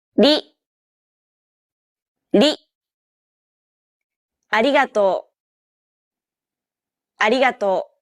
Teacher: with the tip of your tongue it should be a quick striking motion similar to The Sensation you get when pronouncing the T in words like butter cutter and so on don't roll your tongue like an English R · most of the air should go around the sides of your tongue the same way it would when pronouncing an l sound this is why many people describe this sound as in between